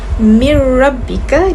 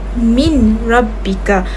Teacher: Jadi cara bacaannya ialah mir rabbika dan bukan min rabbika. Sebab apabila huruf nun sakinah bertemu dengan huruf ra, dengung nun itu akan dihapuskan dan akan dimasukkan ke dalam huruf yang seterusnya. Jadi bacaan perlu lebih lancar dan ditekan pada huruf ra tanpa didengung. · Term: idgham bila ghunah, idgham bila guna